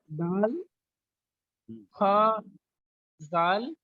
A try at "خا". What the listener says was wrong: خا کو موٹا پڑھیے, خا زال. خا.